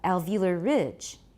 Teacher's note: it's not a compound noun, so we need to stress ridge